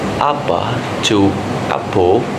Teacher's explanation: First, vowel shifts. A to O, from word apa to apo, region Minangkabau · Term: vowel shift A to O